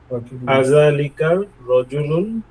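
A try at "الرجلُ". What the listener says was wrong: রজুলু আলিফ লাম হলে তানবিন হবে না।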